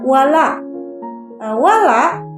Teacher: Kenapa dikatakan hukum bacaan wala ini mad tabi'i? Karena ada harokat fathah yang diikuti huruf alif, maka dibaca mad tabi'i, 2 harokat.